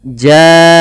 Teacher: Kemudian lafal ja'ahum, panjangkan huruf ja sepanjang 4 harakat atau 5 harakat, karena pada saat ini ada bacaan berupa mad wajib muttasil.